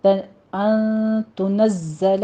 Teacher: زائے کے اوپر تشدید، سیٹی کی آواز کے ساتھ ہم پڑھیں گے اس کو